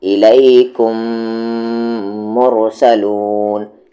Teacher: یہاں پر آپ کو دونوں لپس کو ملانے ہی ہیں، یہاں پہ آپشن نہیں ہے، ملانے ہی ہیں، ٹھیک ہے، کیونکہ غنہ ہے یہ۔ · میم ساکن کے بعد اگر میم آ جائے تو وہاں پر ادغام شفوی کرنا ہے، یعنی کہ غنہ کرنا ہے